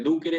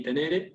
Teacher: Entre ducere y tenere. Ducere es esdrújula y tenere es grave